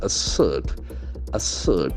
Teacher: Assert, the accent falls the second syllable.